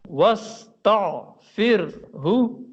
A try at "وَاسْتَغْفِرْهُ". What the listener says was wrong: آپ عین نکال رہے ہیں، عین کی آواز مجھے سنائی دیتی ہے. غین کریں. تغفرہ. وَاسْتَغْفِرْهُ. وَاسْتَغْ غین کی آواز.